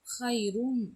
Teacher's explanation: இந்த நூனை மீமா மாற்றணும், அதாவது இம்மா மாற்றணும். இம்மா மாற்றி நம்ம என்ன செய்யணும், 2 விரலுக்கு குன்னா கொடுக்கணும்.